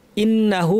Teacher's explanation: হামজা শক্ত নুনের উপর তাসদিদ লম্বা গুন্না